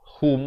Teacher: Kerana ha baris dhammah bunyinya hu, bukan bunyi ho.